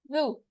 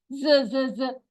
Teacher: ठीक है, ये इधर आके टच करेगी, जबान को दांतों के पास लाएं, टच करें और फिर पढ़ें जू। इसमें ज की साउंड नहीं आएगी, बजिंग साउंड नहीं आनी चाहिए, ज ज ज ऐसे नहीं, जू नरमी से अदा होगा।